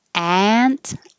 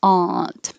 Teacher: Ant with an a, but the person can also be pronounced aunt with an ah.